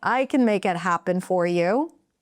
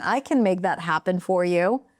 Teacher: Notice that little lift in pitch in the beginning.